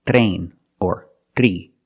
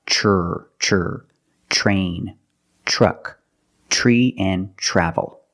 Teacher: So you don't say train or three. Use the ch plus the R, the voiced R sound.